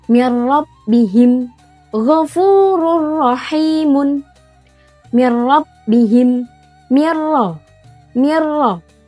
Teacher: dibacanya tanpa dengung dan bersambung